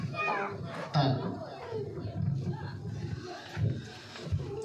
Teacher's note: জিহ্বার আগা সামনে উপরে 2 দাঁতের গোড়ার সঙ্গে লাগাইয়া উচ্চারিত হয়